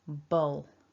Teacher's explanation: we're swallowing that l down · syllable then we've got a ba and that dark owl and we've got a little hinted schwa sound here